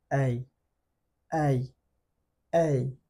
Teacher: শুরুতে মুখটা একটু বড় করব, সাউন্ড বাড়ার সাথে সাথে মুখটা ছোট হবে।